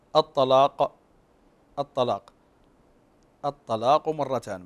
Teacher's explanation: اذا لم نحقق هنا الجهر وكذلك فيها اطباق الطاء فستتحول الى تاء